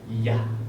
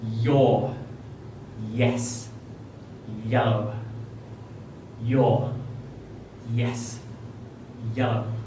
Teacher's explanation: So this one is made by having an open mouth and the middle and back of your tongue very close to the roof of your mouth, and then vibrating the air as it passes between that gap